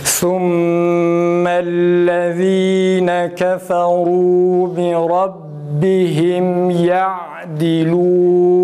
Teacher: Mesela bir Rabbihim kelimesinde ba harfini okurken nefes tamamen kesilecek.